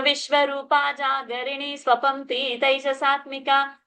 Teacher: Vishwarupa's ru is a long ru. Jagarini's ni is a long ni ending. Swapanti is a long ti. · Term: Dirgha sound